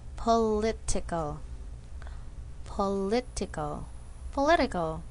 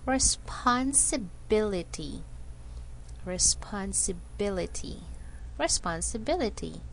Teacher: Stress moves to the syllable just before the ending in these words.